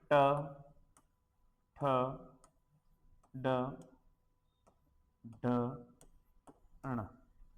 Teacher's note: ट वर्ग का जो उच्चारण है वो मूर्धा से होता है